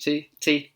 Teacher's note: British people will put that tongue further front of their mouth just behind your front teeth